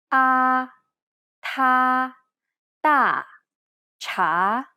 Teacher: this is almost identical to the a sound in the word father except the tongue is in more of a neutral position